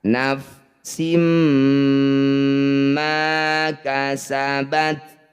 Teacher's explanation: Pertemuan kasrah tanwin mim disebut dengan bacaan idgham bighunah . Masukkan bunyi kasrah tanwin ke dalam huruf berikutnya dan senandungkan selama dua harakat.